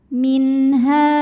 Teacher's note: karena ada Alif didahului fathah maka ha panjang dua harakat · nun sukun menghadapi huruf halqi yaitu ha maka Nun dibaca jelas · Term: Mad thobii, izhar halqi